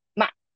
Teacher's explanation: neutral tone is very short and sharp, like ma, okay, so as I mentioned, tones affect meanings.